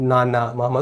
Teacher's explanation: इनके उच्चारण में प्रतीत होता है कि नाक से भी वायु बाहर आ रही है। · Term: नासिक्य व्यंजन